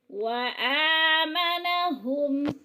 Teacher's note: من جوع، وآمنہم، وآ کے اوپر کھڑی زبر ہے، کھڑی زبر کو 1 الف کے برابر لمبا کر کے پڑھنا ہے۔